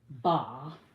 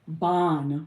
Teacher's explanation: And then if you put the Fata tain, which is the double, you get ban, because it changes from ah to an